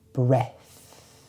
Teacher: Breath is the noun. For this, we use the unvoiced TH.